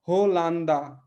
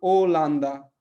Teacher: पुर्तगाली में अगर कोई भी शब्द एच से शुरू होता है तो एच को पढ़ते नहीं है